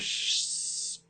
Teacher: So that way sh must be a little bit behind that. So we know that's a palatal alveolar sound, or a post-alveolar sound. And it's continuous, so we call it a fricative.